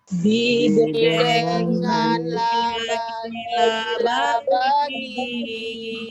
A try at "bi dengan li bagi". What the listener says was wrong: Ibu jangan salah baca. 1 bi, 2 itu li, 3 itu la. Bukan bi dengan la bagi. Bi dengan li bagi la bagi. Ini bilang bi dengan la bagi.